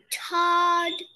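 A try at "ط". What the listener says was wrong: Don't say d at the end. Just say ta, ta, ta, ta, ta.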